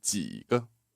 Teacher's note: And the JI is the third tone, that zombie croaky tone, yeah?